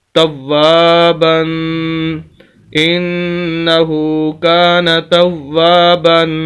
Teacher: 2 زبر ہے، غنہ کریں گے